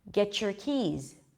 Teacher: When there is a T at the end and then a Y right after, we get a ch sound.